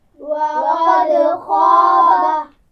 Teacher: خا کو موٹا پڑھا جائے گا اور اس کے ساتھ الف مدہ ہے تو آواز کا اثر آگے بھی جائے گا یعنی خا نہیں پڑھنا اس کو. · دال پر قلقلہ کرنا ہے لیکن دال کے نیچے زیر نہیں پڑھنی